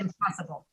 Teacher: don't have to say the n sound it's you're not gonna you're not gonna make any difference in the sound whether you say n or m there because you're going to bring your lips together